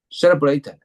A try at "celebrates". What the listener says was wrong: Celebrates, like plural, right? Celebrates. Celebrates. So two parts, like celebrates, right? celebrates.